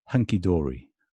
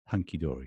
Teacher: Secondary stress is on the first syllable.